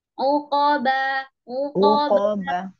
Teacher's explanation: qaf itu kan makharijul hurufnya pangkal lidah menyentuh langit-langit yang lunak.